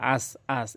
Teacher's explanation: অধিকাংশ লোক কী বলে আস, আস, এখানে হামজার উচ্চারণ করে ফেলে।